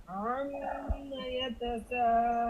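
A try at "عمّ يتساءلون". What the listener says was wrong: হ্যাঁ, হামজা হয় নাই কিন্তু, আলুনের মতন হয়ে যেতেছে। আম্মা, আম্মার মতনই আলুন হয়ে যেতেছে। আ আটা বলতে হবে। আম্মা ইয়াতাসাআলুন বলেন।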